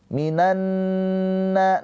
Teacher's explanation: Minanna nun yang bertasydid ghunah musyaddadah ditahan dua harakat.